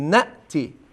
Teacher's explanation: شما یه ذره با رخاوت گفتید نأتی، یا یه حالت قلقله هم داشت، شما با شدت بگید نأتی